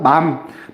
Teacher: 이 비음은 공기를 코로 내보내는 소리입니다.